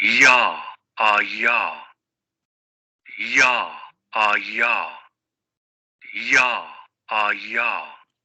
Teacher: entre la P y la E se escucha como un sonido extremadamente palatal y prácticamente rozando al fricativo, porque en ese contexto esta semiconsonante está funcionando como una consonante. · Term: Palatal aproximante sonoro